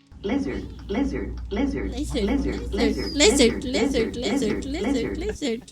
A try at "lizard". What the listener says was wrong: It almost sounds like you're saying blizzard, blizzard.